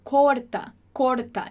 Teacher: a gente tem o som do o bem fechado